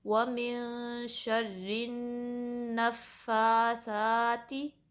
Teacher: سا کا جو مخرج ہے وہ بھی زال جیسا ہے، اس پہ بھی آپ نے زبان کی نوک اوپر کے جو 2 دانت ہیں اس کے کنارے سے لگانا ہے